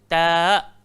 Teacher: Hujung lidah langgar belakang gigi arnab.